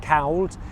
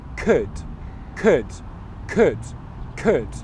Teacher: You don't pronounce the L sound in that word at all. So it's not pronounced could or anything else like that, cowled.